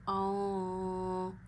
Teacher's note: نون ساکن کی آواز ناک میں لے جا کے ایک انگلی جتنی چھپاتے ہیں۔ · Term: اخفا